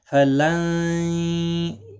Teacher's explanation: نہیں۔ فلن، نون ساکن کے بعد یرملون کا یا آیا ہے، فلن، یرملون کا یا ہے، ادغام مع الغنہ ہوگا، گنہ کے ساتھ پڑھیں گے